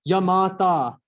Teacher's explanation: a ya gana goes yamata, which is light, heavy, heavy